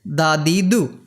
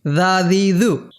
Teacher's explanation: এটি বাংলা দর মতো, ইংরেজি ডির মতো কিন্তু নয়। ইংরেজি ডির চেয়ে অনেক সফট, অনেক নরম হবে। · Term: দাল